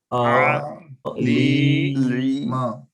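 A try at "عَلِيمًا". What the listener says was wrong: भैया आप लाम को क्यों खींच रहे हैं आप, लाम की वजह क्या है खींचने की, वजह क्या है, कोई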